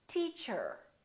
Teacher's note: In British English, people generally don't pronounce the final R, the R at the end of the word. So they say teacher. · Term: British R